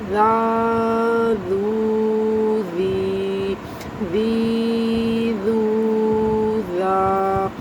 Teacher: مطلب آپ کی زبان کی جو نوک ہوگی وہ اگلے دونوں دانتوں کے درمیان میں آ جائے گی